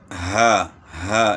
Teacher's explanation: حمزہ اس کا صرف نام ہے، تو جس طرح بھی ا، ای، او، تو یہ اس کی آواز ہے گلے کے آخر سے۔ ہا بھی گلے کے آخر سے ادا ہوتی ہے، تو ہا، ہا اس طرح پڑھیں گے۔